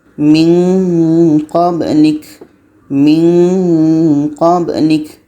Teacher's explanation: Ketika sebut huruf nun kita sudah merasakan huruf qa. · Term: Nun mati qa